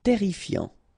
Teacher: Terrifiant, final T not pronounced, double R here, so it will open the pronunciation of your E, and then it will be E, terrifiant.